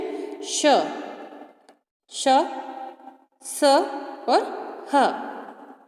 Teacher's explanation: इन व्यंजनों के उच्चारण में एक प्रकार की सुरसुराहट होती है, अर्थात उच्चारण करते समय वायु रगड़ खाती हुई मुख से निकलती है, जिससे ऊष्मा या गर्मी पैदा होती है। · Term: ऊष्म व्यंजन